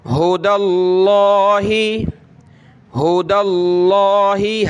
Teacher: لفظ اللہ سے پہلے زبر اور پیش ہو تو موٹا پڑھیں گے